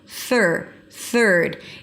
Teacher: Bring the tongue up for the th and pull it in immediately for the r. There is no vowel in the middle. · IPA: θɜːɹd